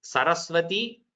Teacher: Saraswati is all Sakara, where the tongue touches your front, that is the teeth.